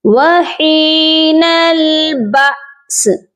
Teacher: سین کی آواز پر قلقلہ نہیں کرنا، صرف آپ نے اس کو واضح کرنا ہے